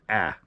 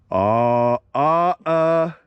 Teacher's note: I tend to slightly alter the alpha so it's pronounced a little bit more nasal